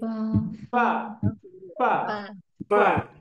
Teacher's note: bibir yang bagian bawah, tapi yang bagian dalam yang lembut ini bertemu dengan ujung gigi saya di atas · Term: huruf fa